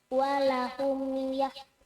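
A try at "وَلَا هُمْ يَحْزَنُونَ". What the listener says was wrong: Walahum, ada panjang.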